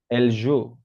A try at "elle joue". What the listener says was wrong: Exactement. Yes, very good.